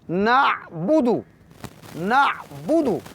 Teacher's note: عین middle of throat یعنی وسط حلق سے ادا کریں گے،